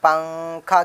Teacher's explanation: نون کی آواز کو ناک میں چھپا کر پڑھنا چاہیے، نوک زبان تالو سے ہٹا کر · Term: اخفا